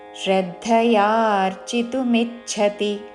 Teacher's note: మిచ్ఛ చ కి మహాప్రాణక్షము ఛ వత్తు చివరిలో తి హ్రస్వము